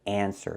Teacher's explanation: we have to pronounce it clearly answer not answer but answer it's more open we're using the an sound like fan and man